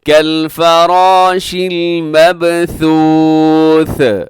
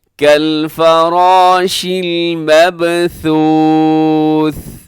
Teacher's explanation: آخر میں ثا ہے، ثا کو کلکلہ نہ کیجیے گا